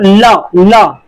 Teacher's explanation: आगे की जीभ लॉक हो जा रही है, साइड साइड से हवा निकल रही है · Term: पार्श्विक व्यंजन